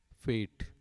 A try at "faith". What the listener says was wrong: extending the second syllable. You're speaking French. You're not speaking English. Faith. Faith. It's faith.